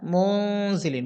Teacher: এবং যার দিকে মাইয়েল হয়েছে এজন্য মুং না বলে মুনজিলিন ডাইরেক্ট ডাইরেক্ট নুনও বলা হয়নি আবার ডাইরেক্ট মুং এটাও বলা হয়নি দুটার মাঝামাঝি একটু বারবার শুনলে বুঝতে পারবেন উচ্চারণটা ইনশাল্লাহ বা জবর বা লামে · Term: গুন্না